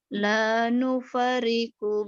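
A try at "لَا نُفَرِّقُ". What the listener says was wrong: Bukan. La nufarriqu. La nufarriqu. Ada tasjid.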